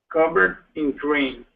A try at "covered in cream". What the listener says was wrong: There you go. Nice job.